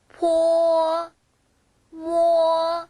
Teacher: 포가 조금 더 기가 세게 나옵니다